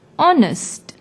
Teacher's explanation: Although it starts with H, it is silent when we pronounce the word honest.